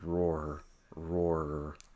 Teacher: Notice that R is voiced, so roar, roar, you should feel your throat vibrate right there.